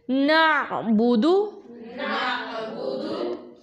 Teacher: अब आइन, फिर से नून की आवाज़ नाक में हल्की सी लेके जानी है, ठीक है। जैसे ना आइन जो है वो हलक के दरमियान से पढ़ेंगे, और बा हम अदा करेंगे दोनों होंठों को मिलाकर